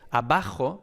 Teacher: a lo mejor puedes estar percibiendo que es una b larga o incluso doble